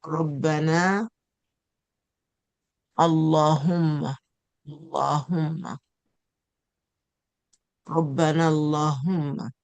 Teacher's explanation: Lam in the name of Allah is heavy. It is pronounced with a full mouth when the preceding letter has a fatha or a dot, like Rabbana, Allahumma, Allahumma, Rabbana, Allahumma.